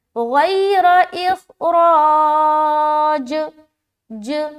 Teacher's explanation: اب جب جیم کے اوپر سکون آ گیا تو اسٹاپنگ کی صورت میں قلقلہ کرنا ہے. تو یہاں پر ہم قلقلہ کریں گے.